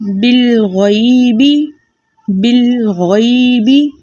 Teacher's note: اب ہم نے با کو لام کے ساتھ ملانا ہے تیزی سے. لام کو اس کے مخرج میں روک دینا ہے. ٹھیک ہے، بالکل بھی ہلانا نہیں ہے.